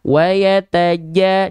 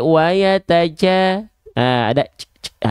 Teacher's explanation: Kenapa Jim enggak boleh bocorbecek nafas karena huruf Jim sifatnya adalah jahr tertahan nafasnya